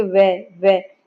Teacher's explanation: नीचे का होट दांतो को स्पर्श कर रहा है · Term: दंतु व्यंजन